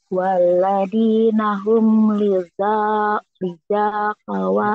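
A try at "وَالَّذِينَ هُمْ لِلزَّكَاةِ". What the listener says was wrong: Walladzi ini wawnya nggak dibaca, nggak ada tandanya. Walladzina hum lizzaka. Yang ini yang dibacanya. Ini nggak dibaca.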